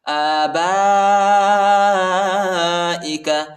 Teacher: با کے بعد جو الف ہے اس کے اوپر بڑا مت ہے، اس کو تقریباً 2-3 سیکنڈ تک کھینچیں گے اور یہ حمزہ ہے، حمزہ کی آواز نکالیں گے۔